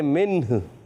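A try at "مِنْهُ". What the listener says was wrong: मिन्हु नहीं पढ़ेंगे, मिन्ह। हा की आवाज आएगी मिन्ह।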